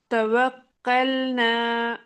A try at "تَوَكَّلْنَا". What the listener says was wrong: کاف نکالیے، قوف کی طرف نہ جائے. توکلنا،